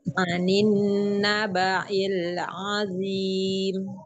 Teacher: Nabail, bukan ain ya, tapi hamzah.